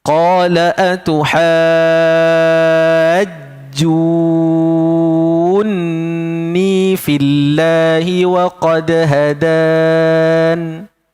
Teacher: Panjang dahulu baru masuk huruf nun dengan dengung.